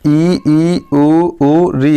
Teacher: मतलब समवर्त स्वर, समवर्त मतलब होता है दोस्तों थोड़ा खुलना, मतलब थोड़ा खुलना। समवर्त स्वर जब भी उच्चारण करेंगे तो मुंह थोड़ा खुलता है